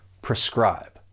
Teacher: that first syllable, even though it's spelled P-R-E, it has a pr sound because it's unstressed